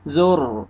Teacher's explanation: را کو پر کریں گے کیونکہ را ساکن سے پہلے پیش ہے